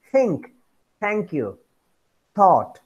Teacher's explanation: tip of the tongue approaches or touches the upper teeth, only upper teeth, as in the sound think. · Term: dental